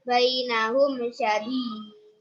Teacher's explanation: Alasannya karena mim sukun bertemu dengan shin, cara membacanya jelas. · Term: Idhar syafawi